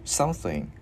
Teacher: Chữ sờ mình đưa lưỡi qua giữa hai răng mình thổi hơi.